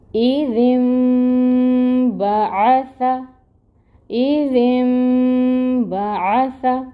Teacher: تو اب ذال کو نون کے ساتھ ملائیں گے اور نون کی آواز کو میم سے بدل کر غنہ کریں گے 2 حرکت کے برابر۔ تو اب یہاں پہ اقلاب ہوگا، غنہ، اور مقدار ہوگی 2 کاؤنٹس۔